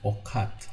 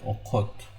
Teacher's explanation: Pay attention, I do not read it okat. I say okot because of this o, round o. We read it as a, this a, we read it as a o.